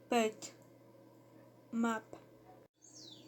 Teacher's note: The phoneme P has bilabial articulation point, that is, it occurs at the junction of the two lips. It has an orthostatic articulation mode, that is, there is a momentary total close of the air passage.